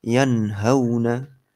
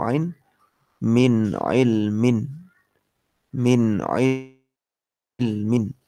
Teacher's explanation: Intinya nunnya dibaca apa adanya tanpa didengungkan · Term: dibaca jelas